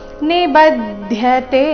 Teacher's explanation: ಬ ಮೇಲೆ ಆಘಾತ ಗಮನಿಸಿ